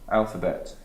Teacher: a word that's got exactly the same rhythm, exactly the same number of syllables, with the stress on the first syllable